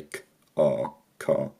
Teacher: Later changes in some English dialects meant that the first vowel was lengthened and backed again, the vowel in the unstressed syllable was weakened, and at least in my accent, the r disappeared in words where it doesn't have a vowel after it. This is called non-roticity. · when I say car, I don't say a r sound at the end